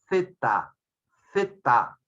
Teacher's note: El ápice de la lengua se coloca entre los bordes de los incisivos superiores y de los incisivos inferiores. Y sale una consonante que nosotros tenemos dificultad de pronunciarlo porque no tenemos la práctica. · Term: consonante interdental